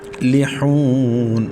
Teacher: لام کے بعد حا حلق کے درمیان سے ادا کریں گے. واو مدہ ہے، حا کے بعد تو واو کو ایک الف تک کھینچیں گے اور لاسٹ میں وقف بالاسکان کریں گے کیونکہ نون کو ہم ساکن کر رہے ہیں.